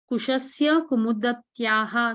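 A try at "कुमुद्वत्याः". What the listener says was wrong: No, slow. Pronounce little more accurately. Slowly. See, there is no Kumudavatyaha because Dakara and Vakara are together. So how do you pronounce it? Kumudvatyaha.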